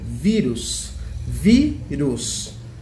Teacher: Vírus é uma palavra paroxítona que tem acento no i. E a sua sílaba mais forte é o vi.